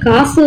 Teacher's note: இதே காசு என்று சொல்லி ஒலிக்கும் போது அதுல இருக்க சூன்ற ஒலி பார்த்தோம்னா 1 மாத்திரையில ஒலிக்காமல் குறைந்து ஒலிக்குது. சோ இந்த மாதிரி பார்த்தோம்னா ஒலிக்கிறதான் குற்றியலுகரம் அப்படின்றாங்க.